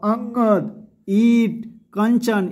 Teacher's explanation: उनकी ध्वनि नाक से निकलती है। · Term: अनुस्वार